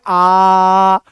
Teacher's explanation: विवृत स्वर में मुंह पूरा खुल रहा है, जितना मैक्सिमम खुल सकता है।